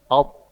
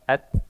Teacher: Alt, ada sifat mantul kolkola. To ada sifat kolkola. Ta dia tidak kolkola.